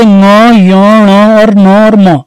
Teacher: जिनके उच्चारण में जो वायु है मुख्य सांस नाक से भी निकलेगी, जैसे ङ ञ ण और ङ और म, ये पांच वर्ण है, इनको नाक बंद करके बोलने की कोशिश करिए आपको पता चल जाएगा। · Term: नासिक के व्यंजन